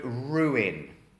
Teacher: the verb and the noun ruin is pronounced with two separate vowel sounds, which is quite unusual in English